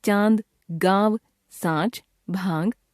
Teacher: इसके अंतर्गत नासिकीकृत स्वर, नेजलाइज्ड वाउल या अनुनासिक आते हैं। अन्य नासिक्य ध्वनियों की ही तरह इनके उच्चारण में भी वायु मुख के साथ साथ नाक से बाहर निकलती है।